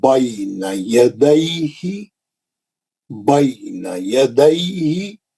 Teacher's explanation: یا ساکن سے پہلے زبر آیا تو لین بنتا، اس کو نرم پڑھنا ہے